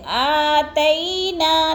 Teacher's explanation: یلین کو ہم نے لمبا بھی نہیں کرنا اور جھٹکا بھی نہیں دینا